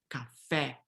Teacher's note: Always when the E has the acute accent mark, it is an open E.